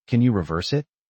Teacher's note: Notice the rhythm. Can you reverse it? The stress is on verse.